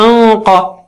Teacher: قاف اونچا ہے تو نون ساکنہ بھی اونچا ہو جائے گا